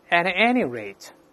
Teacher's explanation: 这是▁any▁要重读了